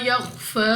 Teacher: Next الف سے پہلے زبر الف مدہ 2 سیکنڈ تک لمبا کریں گے۔ خواہ مستعلیہ میں سے ہے پر یعنی موٹا پڑھنا ہے منہ اور آواز کو کھول کر